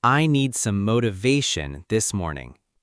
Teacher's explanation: the correct stress is on the third syllable, motivation